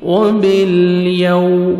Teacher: واو لین ہے، لپس کو راؤنڈ میں لے کے جائیں گے